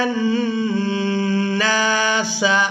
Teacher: نون کو بھی الف مدہ کی وجہ سے کھینچ کر ادا کیا جا رہا ہے۔